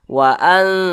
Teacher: didengungkan ditahan dua harakat atau kira-kira dua ketukan · secara membacanya itu samar dan dengung, tapi samarnya dia lebih tinggi daripada dengungnya. Jadi lebih condong berbunyi n. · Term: ikhfa hakiki aqrab